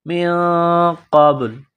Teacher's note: نون ساکن کے بعد قاف ہے، حروف اخفا ہے تو نون ساکن پر غنہ کریں گے، قاف کو موٹا کرنا ہے. من قبل، قاف کو با کے ساتھ ملانا ہے، با ساکن ہے تو با پر قلقلہ کریں گے. من قبل.